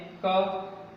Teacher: क का उच्चारण स्थान कंठ से होता है, कंठ बनना है यहाँ पर।